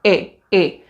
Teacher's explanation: É um I que você abre mais a boca. E.